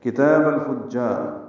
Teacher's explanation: کاف تا باریک ہیں، تا کو 2 حرکات لمبا کرنا ہے